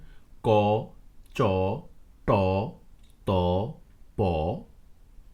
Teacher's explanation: যে সকল ধ্বনি উচ্চারণের সময় ভোকাল কর্ডস বা স্বরযন্ত্রে কম্পন ঘটে না সে সকল ধ্বনিসমূহকে অঘোষ ধ্বনি বলে বর্গের প্রথম এবং দ্বিতীয় সারের বর্ণসমূহ অঘোষ ধ্বনি বা অঘোষ বর্ণ